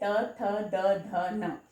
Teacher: जीभ हमारे दांतों को टच करती है, हमारे दांतों को छूती है। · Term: त वर्ग